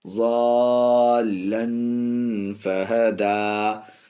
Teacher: تنوین کے بعد حرف اخفا، اس لیے یہاں پہ اخفا ناک میں آواز جائے گی